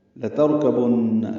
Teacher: را ساکن ہے، یہ پر ہے. کاف تا باریک ہیں، با کو نون سے ملانا ہے، نون مشدد پہ غنہ ہے